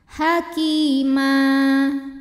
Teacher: karena ada ya sukun yang sebelumnya baris kasroh, maka huruf kaf dipanjangkan 2 harokat. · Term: mad tabi'i dhahiri